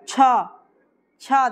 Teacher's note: छ जब बोलेंगे तो तालू से हो रहा है